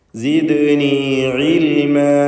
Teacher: ദാലിൻ്റെ സുക്കൂൻ ഖൽഖല സുഗ്റ നൽകി ശബ്ദം ഹറക്കത്ത് പോലെ ചലിപ്പിക്കുക.